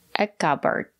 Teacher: it's a two-syllable word that stresses on the first syllable